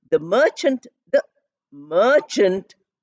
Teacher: I'm putting more stress on Merchant